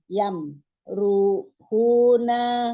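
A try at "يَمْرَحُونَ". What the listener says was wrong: Yamrohuna. Ro. Bukan ru. Yamro.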